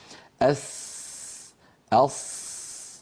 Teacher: نضع رأس اللسان على أسفل الصفحة الداخلية للثنايا السفلى. أس، ولكن أقصى اللسان ومؤخرة اللسان لا ترتفع كما فعلنا ذلك في الصاد. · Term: حروف الصفير